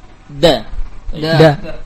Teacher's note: Makhraj huruf ini adalah dari ujung lidah dengan pangkal gigi seri, dengan usulus tanaya pangkal gigi seri al-ulya, atas. Di antara sifat dal adalah jahru, yakni keluar tanpa aliran nafas